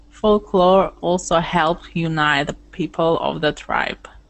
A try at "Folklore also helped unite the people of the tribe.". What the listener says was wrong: There you go, unite. Okay, nice.